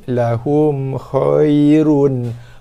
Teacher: Hum, mim mati jumpa kha, izhar syafawi. So kita izharkan mim, lahum khairun.